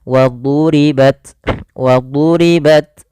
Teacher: Jangan dibaca waduribat, nanti huruf dal, tapi dia huruf dha. Wadu ditebalkan huruf dha-nya